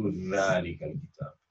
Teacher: the tip of the tongue, instead of coming out between the teeth, they may keep the tongue inside, and instead of pronouncing a tha, they pronounce a sa.